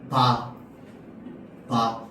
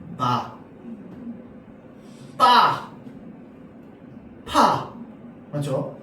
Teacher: 공기가 나오는 통로를 중간에 한번 막았다가 터뜨리면서 원래 크기를 회복하면서 소리내는 걸 파열름이라고 합니다. 바 입술이 막았다가 열리죠. 터뜨려지죠?